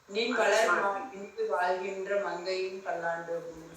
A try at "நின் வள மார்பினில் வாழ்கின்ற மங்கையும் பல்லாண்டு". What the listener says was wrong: ஸ்ரீலட்சுமிமா இரு கிடையாது, வள மார்பினில் தான்.